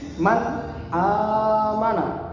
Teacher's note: dibacanya terang atau jelas, tidak dengung dan juga tidak panjang, tidak ditanwinkan, tidak dimasukkan ke dalam huruf setelahnya, tidak didengungkan, tidak dipanjangkan, tapi jelas.